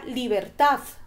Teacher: Tiene 3 golpes de voz y la sílaba tónica recae en ta.